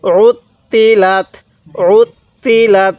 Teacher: তটা দুইবার উচ্চারণ করব কারণ ত এর উপরে তাসদিদ আছে